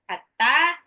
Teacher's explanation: haknya tipis pakai tenggorokan tengah